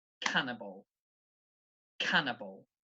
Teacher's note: So this word, the stress is on the first syllable